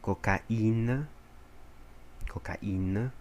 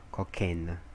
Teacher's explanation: vai ser o som de a e depois o som de i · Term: trema